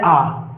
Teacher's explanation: आ जहां मुख पूरा खुला हो आ तो विपत स्वर होता है बाकी सब अर्ध वित स्वर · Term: विवत स्वर